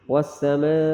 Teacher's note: پانچ الف والا بڑا مد ہے، وقف میں مد کر کے آواز ختم ہو جائے گی